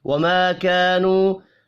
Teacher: اب یہاں پر الف مدہ، پھر الف مدہ اور آخر میں واو مدہ، تینوں ایک ایک الف کے برابر کھینچ کر پڑھے جائیں گے